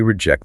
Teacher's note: Stress on ject, the committee will likely reject the proposal.